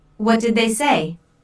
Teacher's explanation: Notice how say is emphasized, but the intonation falls at the end of the word. This is a what question, so the intonation falls at the end.